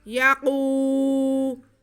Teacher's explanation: या पे ज़बर, काफ पे पेश और वाव साकिन, तो ये वाव मद्दा हो गया। काफ के बाद को हम खींचेंगे।